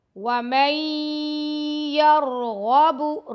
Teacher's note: را اور غین کو موٹا پڑھیں گے، با کو لمبا بالکل نہیں کرنا آپ نے.